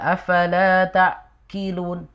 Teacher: Ketika dibaca afala ta'qilun, ki itu kaf, makanya agak mundur. Jadi makhraj huruf qaf dia ada di lidah paling belakang, pangkal lidah. Kemudian terangkat, kemudian menempel pada langit-langit yang lunak yang belakang.